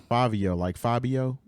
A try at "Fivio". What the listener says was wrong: With a V. Fivio.